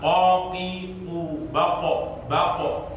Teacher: Misalnya kita membaca qaf, maka qaqiu baqo. Setelah kita mengucapkan huruf qaf itu, maka baru akan muncul yang namanya pantulan. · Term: qalqalah